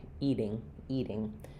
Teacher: the t is between two vowels followed by an unstressed syllable. So, here we're going to have the flap · It's going to sound like the same as D's sound in the middle of words. Not a strong D, not eating, but a light flap tap up